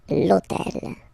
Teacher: this hôtel, okay, because it starts with H, but remember that in French we don't pronounce H, okay, so basically the first sound of the word is the vowel O , okay, so for the same reason, needs to disappear, l'hôtel,